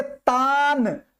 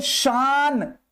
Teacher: उस नून की आवाज नाक में नहीं जाती है, उसी नून को बोलते हैं नूने जाहिरा